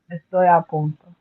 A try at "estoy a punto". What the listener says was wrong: There you go.